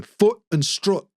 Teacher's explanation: now in the north they are the same foot and strut